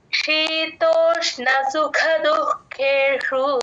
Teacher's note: పక్కన విసర్గ హెచ్ అని రాసేసుకోండి దుఃఖేషు సుఖలో మహాప్రాణం ఖ కి ఉంది దుఃఖేషులో ఖ కి మహాప్రాణం రెండు వినపడేటట్టు చెప్పాలి